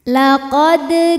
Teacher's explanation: maka cara bacanya adalah dipantulkan dengan pantulan yang kecil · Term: Qalqalah Sugra